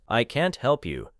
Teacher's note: In a negative sentence, can't is usually stressed.